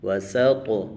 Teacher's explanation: واو زبر و سین طا زبر سط وسط طا پر کلک کریں گے اور موٹا بھی کریں گے